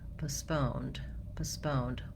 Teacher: Then when it comes to the British English, they have also second syllable stress, but in British English, we have schwa in the first syllable, and then my second syllable stress